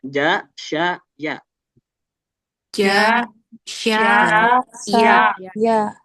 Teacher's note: Nah, ini disebutkan nih tengah lidah mengarah ke langit-langit. Jadi, dia tengah lidah nanti bertemu langit-langit.